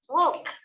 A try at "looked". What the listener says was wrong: Looked, t, t.